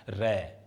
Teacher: रै का उच्चारण करेंगे हमारी जीभ मूर्धा से टकराएगी, ऊपर वाले भाग बताया था आपको, दांतों का ऊपर वाला भाग है जो मूर्धा है, रै। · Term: मूर्धन्य वर्ण